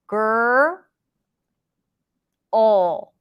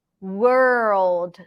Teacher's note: it's a dark l so it's not a typical Le sound it's created very similarly to the r sound gur all so you're just like pushing a little bit more